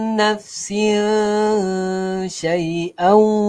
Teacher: tanwin bertemu dengan huruf syin, ha, kena dengung